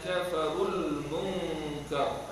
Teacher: Nun mati bertemu dengan kaf, ikhfa hakiki ya. Ikhfa hakiki dengan dua harakat. · kalau kita berhenti di atas ra itu dibaca dengan tebal ya